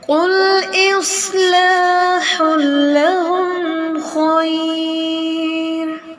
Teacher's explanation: ہا کا جو ہمس ہے اس کو واضح کریں،